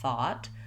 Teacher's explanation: Then, when we look at the same spelling, but we add a T, two things change besides the T. The O-U-G-H in the word thought is actually an aw vowel. That's marked this way in the dictionary, thought.